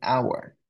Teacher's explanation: We pronounce this word as our without the letter H.